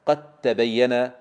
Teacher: أدغمنا الدال في التاء فننطق التاء خالصة